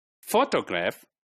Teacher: this is a word which has three syllable but the first one is made prominent right it is on the first right photograph right then photographer